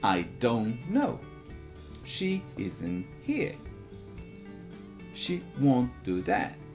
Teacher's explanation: como pronuncia o N''T? Engole o T.